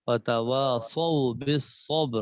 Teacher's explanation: کوشش کرنی ہے کہ سواد کو ذرا موٹا رہے